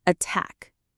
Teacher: the stress is on the second syllable, attack. So that t sound is very strong and clear.